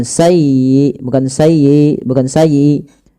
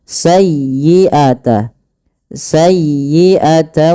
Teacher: tekan di huruf ya-nya karena dia ya tasdid dan lembutkan ya.